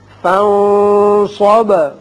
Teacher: فَانصَبْ نون پر اخفا، با کی صفت قلقلہ